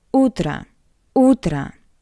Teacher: o sounds like a because it's unstressed